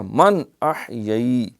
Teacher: نون ساکن کے بعد حمزہ آ گیا ہے، حروف مدہ، یہاں نون پہ اظہار ہوگا